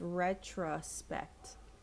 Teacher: so retro we don't really close the oh